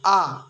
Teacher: উচ্চারণ করার সময় জিহ্বার সবচেয়ে নিচে নেমে আসে এবং ঠোঁট দুটি খুব বেশি পরিমাণে খুলে যায় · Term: বিবৃত স্বরধ্বনি